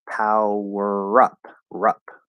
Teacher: it's almost as if there's a r consonant connecting to up